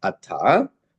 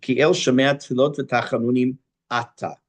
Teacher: It's called mila'el. For the accents on the first syllable.